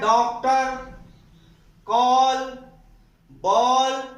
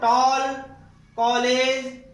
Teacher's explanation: ये आ और ओ के बीच की ध्वनि है ये। जैसे हम लिखते हैं डॉक्टर, कॉल, बॉल, ऊपर एक चंद्र सा बिंदु आता है, बिंदु नहीं आता, चंद्र आधा कटा हुआ चंद्रमा के समान दिखता है, और टॉल, कॉलेज आदि, तो ये किस में आते हैं, ये इस आ की ध्वनि में आते हैं जो ग्रहित है।